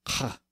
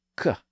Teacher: ancient Greek also had a slightly different sound that was more aspirated or breathy, more like kh. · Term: breathy K sound